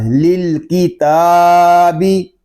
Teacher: تا کو ہم ایک الف تک کھینچ کر پڑھیں گے کیونکہ تا کے اوپر کھڑا زبر ہے اور کھڑے زبر کو ایک الف تک کھینچ کر پڑھتے ہیں.